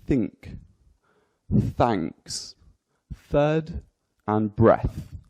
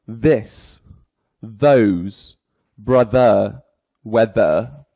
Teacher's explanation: we've got voiceless so no vibrations in the voice vocal chords